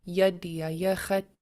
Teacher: These are all short, high tone vowels, and they have like a nice upbeat rhythm to them